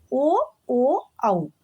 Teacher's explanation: ಕಂಠ ಮತ್ತು ಓಷ್ಟ ಇದರಿಂದ ಉಚ್ಚಾರಣೆ ಮಾಡುವಂತಹ ಅಕ್ಷರಗಳು